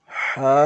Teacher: ہا حلق کے درمیانی حصے سے ادا ہوتا ہے